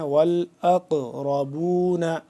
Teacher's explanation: حمزہ قاف زبر قاف یہاں پہ ساکن ہے تو اس کو ہم نے قلقلہ کرنا ہے